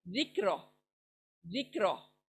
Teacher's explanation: जिक्र, जी जाल यहाँ पर सॉफ्ट है, काफ छोटा है, तो जिक नहीं जाना है, काफ हलक में नहीं जाना है